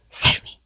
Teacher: it sounds like a very breathy, low, save me. You can barely hear him.